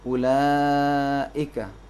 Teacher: مد کو زیادہ کھینچنا ہے، اپنی طبیعی مقدار اصلی مقدار سے ذرا زیادہ کھینچنا پڑتا ہے، اسے مد متصل کہتے ہیں.